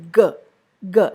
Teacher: It is definitely a voiced sound, during the production of which the vocal cords vibrate.